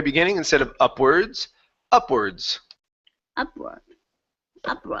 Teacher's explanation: the stress is at the very beginning